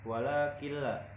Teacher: ada nun sukun bertemu dengan lam tidak dibacanya tidak didengungkan